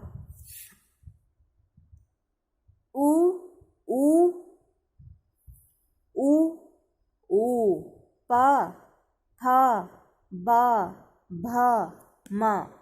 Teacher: इन सब में हमारे ओंठ कार्य कर रहे हैं, ओंठ मूवमेंट कर रहे हैं